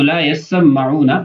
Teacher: کا اصل یعنی لا يسمعون کی اصل یہ ہے کہ یتسمعون، ادغمت التاء فی السین، تا کا سین کے اندر ادغام کیا گیا